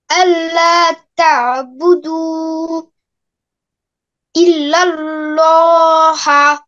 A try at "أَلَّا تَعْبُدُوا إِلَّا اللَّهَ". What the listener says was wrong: আর এখানে থামা যাবে না, একবারে বলতে হবে, একবারে বলো।